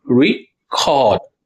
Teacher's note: Here if you're stressing the second syllable, record. That's a verb doing an action.